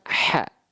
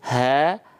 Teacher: H kecil naikin di tengah tenggorokan.